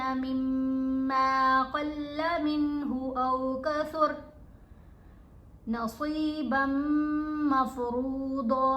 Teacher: स्वाद को, क़ाफ को, दौद को हमने पुर पढ़ा, मोटा पढ़ा